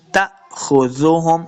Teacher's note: حمزہ ساکن کو جھٹکے کے ساتھ پڑھنا ہے۔ ہم نے کل کے سبق کے اندر بھی آپ کو بتایا تھا کہ حمزہ ساکن جب بھی ہوئے گی تو ہم نے اس کو جھٹکے کے ساتھ پڑھنا ہے، لمع بالکل نہیں کرنا۔